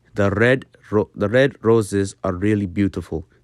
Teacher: you will naturally roll your R very slightly it's kind of at the tip of the tongue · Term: gentle R sound